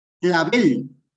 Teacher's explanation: Clavel, sí tiene la sílaba tónica en la última, pero termina en L, por lo tanto no se tilda. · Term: aguda